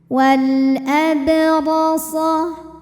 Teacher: huruf ra dibunyikan secara tafkhim karena ra berharokat fathah, maka dibacanya tebal.